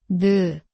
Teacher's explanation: 니은, Shows the tongue tip touching the upper gum. 느, The tongue gently meets the front roof of the mouth. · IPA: [neu]